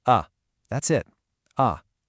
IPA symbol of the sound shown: ə